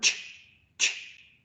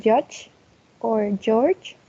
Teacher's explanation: The only difference is that we added vibration in the vocal cords.